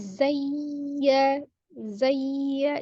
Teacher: ada hukum nabr ya ditinggikan ditekan suaranya tapi tidak ditahan